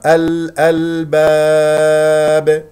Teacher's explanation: ونقف على باء ساكنه مقلقله قلقله كبرى لانها في اخر الكلام